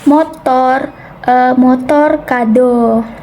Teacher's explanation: Nah, untuk bunyi vokal O Media atas belakang dengan posisi bibir semi tertutup